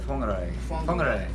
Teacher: the Maori pronounce W-H, they pronounce it Fwa. Like, not quite an F, it's got like a Fwa, it's weird, it's sort of Fwa.